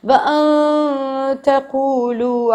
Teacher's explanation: نہ حروف حلقی ہے نہ ہی یمون ہے. تو وَأَن تَقُولُوا نون کو اخفا کریں گے